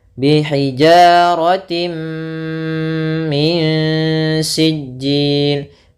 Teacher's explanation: Idgham bi gunnah nanti itu khusus di sini, yaitu adanya tanwin bertemu dengan mim, ini idgham bi gunnah. Yaitu jelas masuk tanwinnya ke mim.